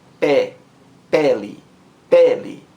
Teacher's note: A sílaba mais forte é a primeira sílaba. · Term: sílaba tônica